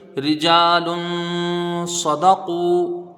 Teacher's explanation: جیم میں الف مدہ ہے، ایک الف کی مقدار کھینچ کے پڑھیں گے، لام کے اوپر دو پیش کی تنوین ہے، تنوین کے بعد حروف اخفا کا صاد ہے، ایک الف کی مقدار یہاں پر غنہ · را کے نیچے زیر ہے، جلدی پڑھیں گے، را کو باریک پڑھیں گے۔ جیم میں الف مدہ ہے، ایک الف کی مقدار کھینچ کے پڑھیں گے